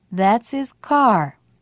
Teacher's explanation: because these pronouns and helping verbs are not very important words we don't say them clearly we don't stress these words